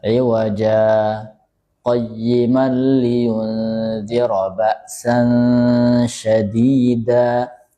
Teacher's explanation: Jadi saktah iwaja tanpa tarik napas.